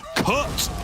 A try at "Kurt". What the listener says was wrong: you really gotta get down low with the R, right? Like Kurt.